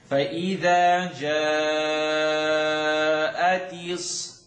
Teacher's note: You're going to stretch, then you're going to hold the shadda. Interesting, doesn't happen a lot in the Quran, but you're going to stretch and then hold.